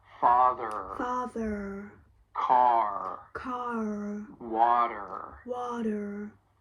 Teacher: you need to pronounce those R's, especially at the end of words. So this is a pretty clear distinction between British English and American English, because in British English, those R's may get dropped, but not with the American accent.